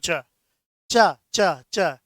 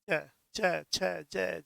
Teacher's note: तो च बोलने में जहां पर भी आपकी जीभ लगती है वही तालु है।